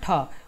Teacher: ठ है आपका मूर्धन्य महाप्राण अघोष वर्ण, महाप्राण अघोष वर्ण है।